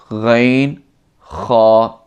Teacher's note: یہ 2 حروف حلق کے اوپر والے حصہ سے ادا ہوتے ہیں